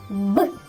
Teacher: При вимові звуку Б на шляху повітря зустрічається перешкода губи. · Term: звуком Б